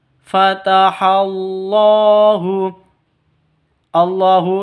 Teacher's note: Allahu lafdul jalala panjang hanya dua ketukan